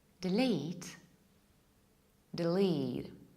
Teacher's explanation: In a word delete, the first E is short, D, and the second one is long, lead. You push it, delete.